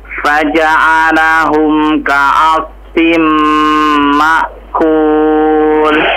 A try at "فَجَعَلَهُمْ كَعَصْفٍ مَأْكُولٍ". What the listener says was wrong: Ya, dicoba lebih jelas lagi huruf ainnya ya. Ainnya kurang kena sedikit lagi tuh makhrajnya.